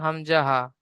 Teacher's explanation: যেমন 1 নম্বর মাখরাজ, হলকুলা কণ্ঠ, হলকের শুরু থেকে, গলা বা হলকর শুরু থেকে উচ্চারিত হয়